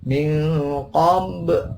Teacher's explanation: ba mati dibaca qalqalah. Min qab dipantulkan.